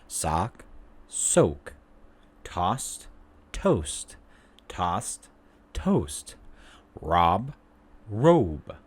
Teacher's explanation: You can definitely feel the rounding of your lips when you're pronouncing these different words.